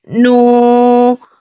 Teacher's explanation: کہیں گے۔ اس سے پہلے پیش ہے یہاں واو مدہ ہے، واو مدہ کو 1 الف کی مقدار کے برابر کھینچ کے پڑھیں گے